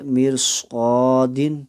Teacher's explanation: ایک ہی کلمے میں را ساکن سے پہلے زیر اصلی ہو اور اس کے بعد حرف مستعلیہ ہو تو را ساکن کو پر کر یعنی موٹا کرے کے پڑھیں گے، جیسے کہ میر صاد۔ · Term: تفخیم